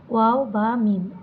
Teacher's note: দুই ঠোঁট থেকে উচ্চারিত হয়